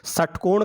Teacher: षटकोण का से मूर्धा से बोला जाता है, तो इसको मूर्धन्य से कह देते हैं।